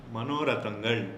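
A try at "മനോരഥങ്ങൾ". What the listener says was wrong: What is your like non-maluse problem with nga? Say nga. Manorathangal.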